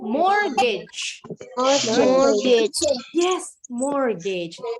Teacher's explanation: the T in the middle is silent.